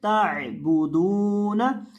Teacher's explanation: ता को आइन के साथ मिलाकर पढ़ेंगे, बा के ऊपर पेश है और दाल के ऊपर भी पेश है, लेकिन दाल के बाद वाव मद्दा भी है तो दाल को लंबा करके भी पढ़ेंगे